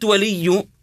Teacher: الياء هنا مشدده لابد ان نضغط على الحرف المشدد الضغط على الحرف المشدد حتى يظهر هذا يسميه علماء التجويد بصفه ايش صفه النبر وهي الضغط على